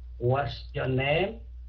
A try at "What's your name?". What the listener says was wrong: Name, chứ không phải what's your name. What's your name? Xuống giọng, what? Không được lên giọng.